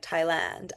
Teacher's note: if I say things like Thailand, I will elongate the A. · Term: elongate my A's